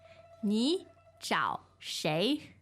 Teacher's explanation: the tones are third third and second